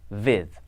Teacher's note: means germans are likely to pronounce what sounds as in english a word like with may be pronounced viv